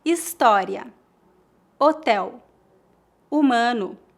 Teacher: No português, o H é mudo, ou seja, não é pronunciado.